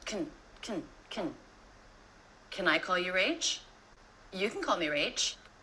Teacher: can is so fast there, as if it has no vowels at all, just the K sound and the N sound